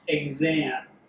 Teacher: in some words it is voiced in which case it is written phonetically with a gz instead of a ks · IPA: /gz/